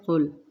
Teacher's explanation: قل، قوف پیش لام، قل، قل نہیں کرنا، زور نہیں دینا، لام کو نرمی کے ساتھ ادا کریں گے، قوف البتہ پر پڑھیں گے